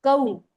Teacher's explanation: दोनों को बिल्कुल नहीं खींचते, नर्म आवाज से जल्दी पढ़ते हैं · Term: वावलीन